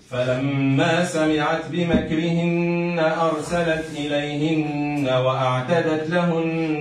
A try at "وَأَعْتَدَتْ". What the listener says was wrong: تو كنقولوا هكا سامحهم كنقولوا ارسلت اليهن واعتدت واعتدت وين الهمزه وأعتدت عودها ترى يلا